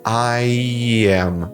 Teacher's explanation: E esse alongar ele um pouquinho entra esse som intrusivo de I. Fica I am. Esse I am é justamente esse som intrusivo.